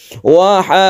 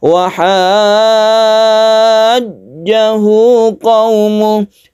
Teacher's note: Mustaqol artinya diberatkan, bahwa ini adalah mad tabi'i bertemu dengan huruf yang bertasydid dalam satu kata atau satu kalimat. Maka kita panjangkan dahulu 3 alif, kemudian kita tasydidkan ke huruf berikutnya. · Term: mad lazim mutawwal